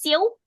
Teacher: Jadi kita kena naikkan angin ke hidung. Dia ada bunyi sengau sikit. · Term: Idgham maal ghunnah